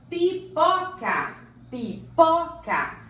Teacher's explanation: A sílaba tônica é o pó. Então, ela é paroxítona.